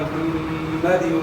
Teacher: مخرج سے ادا کرنا ہے، یعنی گلے کے درمیان سے، اور میم مشدد میں غنہ ہوگا ، اور وقف کریں گے تو دال ساکن ہو جائے گا،